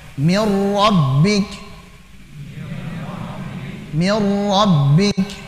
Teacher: Kalau ketemu dengan lam dan ra, maka idgham bila gunnah, melebur tanpa disertai dengan gunnah